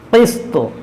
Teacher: قاف کو موٹا کریں گے حروف مستعلیہ ہے طا کو بھی موٹا کریں گے اور طا حروف قلقلہ بھی ہے حروف مستعلیہ ہے اس میں